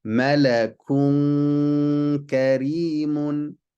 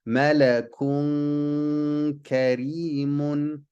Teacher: There's still going to be a slight noon sound, but we're going to hide it. And we're going to hide it with a ghunna, 2 counts, while we get ready to say the next letter. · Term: al-ikhfa